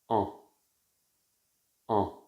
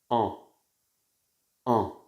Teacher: voyelle ici ma bouche va être plus ouverte en en et mes lèvres sont neutres ni en arrière ni en avant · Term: deuxième voyelle nasale